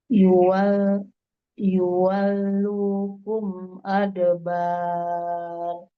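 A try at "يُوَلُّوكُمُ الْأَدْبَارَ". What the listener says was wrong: Kumul, bukan kum.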